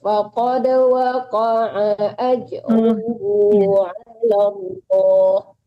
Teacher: waqa'anya jangan tertahan, A-nya nggak panjang.